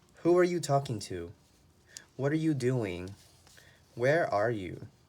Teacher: But if we ask questions with the 5 W's, your voice goes down.